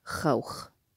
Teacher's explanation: in Fusha, in modern standard, we're going to pronounce the actual sound ow.